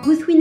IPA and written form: guθwinɛ (Guthwine)